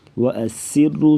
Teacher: سین سیٹی کے آواز, را کو پر پڑھیں گی موٹا